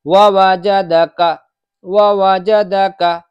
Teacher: ووجدک میں کاف بالکل بھی نہیں کھینچنا چاہیے، کاف پہ زبر ہے، ذرا سا بھی نہ کھینچے